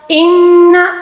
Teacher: یہاں پر نون مشدد کا غنہ ہے